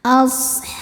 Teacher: him ada hukum izhar syafawi sebab mim sukun menghadapi huruf yang bukan mim ataupun ba, maka mim sukun dibaca jelas.